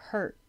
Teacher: you don't have to say the T, your tongue can just hold there